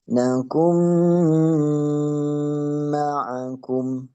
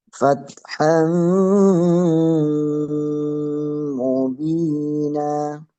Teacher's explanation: Langsung berbunyi ke mim. Bunyi nunnya. Memasukkan bunyi nun tersebut dimasukin ke huruf yang belakangnya.